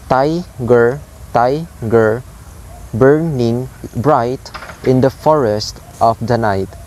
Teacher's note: the pattern is high sound, low sound, high sound, low sound, or stressed syllables followed by unstressed syllables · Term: trochaic foot